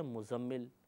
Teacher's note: زے کو بغیر تشدید کے پڑھتے ہیں